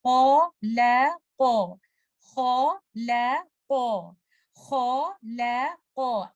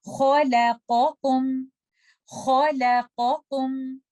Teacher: In this example, letter kha is heavy, lam is light, qaf is heavy. The transition from heavy to light and then heavy, sometimes it becomes difficult.